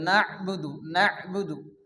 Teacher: ইয়াকা না, এখানে কিন্তু আইন আছে না'বুদু, না না, অনেকে আছে নাবুদু পড়ে, এখানে আইন আমাদেরকে ভালো করে উচ্চারণ করতে হবে